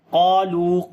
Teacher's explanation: قاف کو موٹا پڑھیں گے صفت استعلا کی وجہ سے، اور الف کو موٹا پڑھیں گے، الف سے پہلے قاف موٹا ہے اس وجہ سے، اور لمبا بھی کریں گے، قاف کو الف مدہ ہے، لام کو لمبا کریں گے، واو مدہ ہے۔